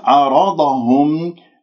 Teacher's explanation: الراء مفخمة لأن مفتوحة، والضاد مفخمة